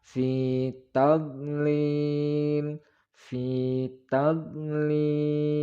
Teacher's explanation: dot itu tidak boleh dipantulkan atau qalqalah karena huruf dot bukan salah satu dari huruf qalqalah